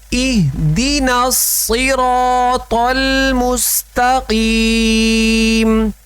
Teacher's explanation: یہ حمزہ اور دال دونوں باریک ہیں. دے پڑھیں گے تو مجہول ہو جائے گا.